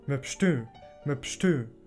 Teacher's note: Das Ü da drin ist auch nasal.